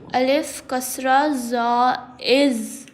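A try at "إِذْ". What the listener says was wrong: Il. No whistle sounds. Read with soft and without whistle sound.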